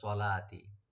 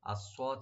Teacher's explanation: আসওয়াদ এখানে ডিপ করে পড়বো, আসওয়াদ সিন যেন না হয় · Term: সোয়াদ ডিপ হবে